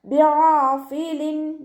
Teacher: തെൻവീനിലുള്ള നൂനിൻ്റെ സൗണ്ടിനെ നമ്മൾ വ്യക്തമാക്കി മണിക്കാതെ ഉച്ചരിക്കുക കേട്ടോ. ബിആഫിലിൻ നൂനിൻ്റെ സൗണ്ടിനെ നമുക്ക് വ്യക്തമായിട്ട് കേൾക്കണം. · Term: ഇദ്ഹാറിൻ്റെ